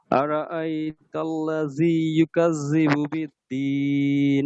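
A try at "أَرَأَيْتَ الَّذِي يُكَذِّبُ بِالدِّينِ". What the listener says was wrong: ওই জাল শক্ত হয়ে যায়, জালটা নরম হবে। ওই জালটা কিন্তু শক্তই হয়ে যায়। আল্লাযী, এটা একটু দুই একবার বলেন।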